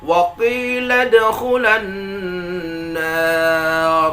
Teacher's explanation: Maka ketika membaca ayat ini, kita datarkan saja intonasi suara tanpa ada an-nabar pada kata khula